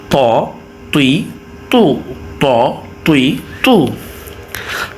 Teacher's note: জিহ্বার আগা দাঁতের গোড়ার সাথে লাগে